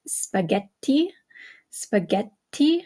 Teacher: consonant okay such as in spaghetti spaghetti okay you hear how the extra T is is held a little bit longer